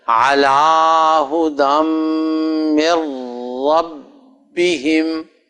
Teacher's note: عین کو تو لمبا نہیں کرنا نا بیٹے، عین کی تو زبر ہے، صرف لام کی کھڑی زبر ہے